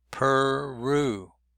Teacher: And Peru is stressed second syllable by the double R.